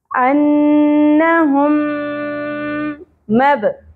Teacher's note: با ساکن پہ قلقلہ ہوگا · ان دونوں دونوں میم کو ہم جوڑ دیں گے جوائن کر دیں گے اور غن بھی ہوگا ادغام مع الغن ٹھیک ہے [موسیقی] انہم مب با ساکن پہ